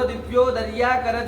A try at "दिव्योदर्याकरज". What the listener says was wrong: दिव्योदर्या है, दिव्योदर्य होगा ना।